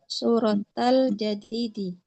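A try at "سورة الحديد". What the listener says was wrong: Suratal Hadidi. Betul, jangan jadid. Nggak ada nama surat Al-Jadid. Al-Hadid.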